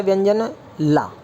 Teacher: और पार्श्विक माने बोलेंगे आप सेंटर से, साइड से, जीभ के साइड से थोड़ी हवा का निष्कासन होगा।